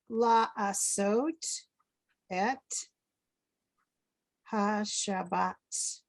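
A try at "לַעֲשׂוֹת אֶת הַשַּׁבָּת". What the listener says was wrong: Very nice, thank you.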